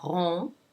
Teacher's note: There's the R with the nasal on sound. The N is not pronounced because it is not followed by a vowel. It's followed by another consonant, so you don't pronounce it.